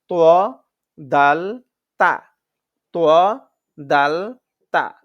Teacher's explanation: জিহ্বার আগা সামনের উপরের দুই দাঁতের গোড়ার সঙ্গে লাগাইয়া জিহ্বার আগা সামনের উপরের দুই দাঁতের গোড়ার সঙ্গে লাগাইয়া এটা শক্ত